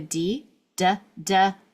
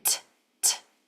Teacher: So we have a du du using my voice and t. No voice.